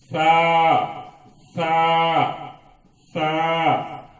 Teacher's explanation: زبان کی نوک اوپر کے دانتوں کے کناروں کو تھوڑا آگے کر کے نرم آواز کے ساتھ ادا کرنا ہے